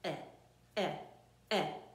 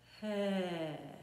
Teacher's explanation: it's like a forced explosion from your vocal cords.